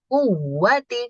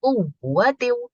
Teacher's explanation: supaya membedakan wawu biasa dengan wawu bertasdid itu dibikin naber. Jadi agak naik kuwati gitu.